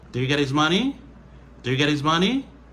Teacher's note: His, ici, il perdu son H là. Parce que il est suivi de get.